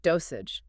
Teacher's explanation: Listen to the soft G at the end, which sounds like a J, dosage. Say it out loud.